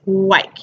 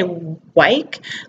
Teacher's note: you can see when I say white my lips are rounded